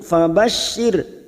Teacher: ra sukun yang didahului kasroh kita baca tarkik tipis.